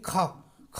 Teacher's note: प्राणवायु गले से बहुत ज़्यादा निकल रही है, बहुत ज़्यादा हवा निकल रही है मुख से, है ना। तो ये हमारा कैसा हो जाएगा, महाप्राण हो जाएगा।